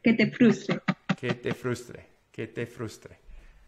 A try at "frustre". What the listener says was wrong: Frustre. O frustre. frustre. Sin R al final. Frustre, frustración, frustre. Frustre. Frustre.